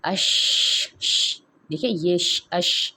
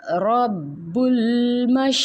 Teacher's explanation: اب یہ جو شین ہے نا، اس کی صفت یہ ہوتی ہے کہ جب ہم شین کی ادائیگی تو ہم زبان کے جو درمیانی حصہ ہے اس کو جب اوپر کے سخت تالو سے لگاتے ہیں تو وہاں سے شین کی ادائیگی ہوتی ہے. لیکن جو شین کی صفت یہ ہوتی ہے کہ اس میں پھیلاؤ ہوتا ہے،